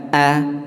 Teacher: Hamzah tadi keluarnya di pangkal tenggorokan, satu tempat dengan ha ya, sehingga a ya.